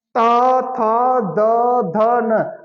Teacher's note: हम जैसे बोलते हैं तो जीभ किसको छुआ? दांत को, दंत से आ रहा है।